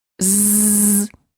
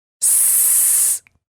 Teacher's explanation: The tongue and lip positions of the z and the s are identical. The only difference between them is vibration or no vibration.